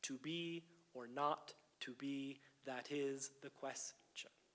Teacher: In the first 3 feet, the metrical stress and the natural accent stress probably align. But in natural speech, we probably wouldn't accent the is in the 4th foot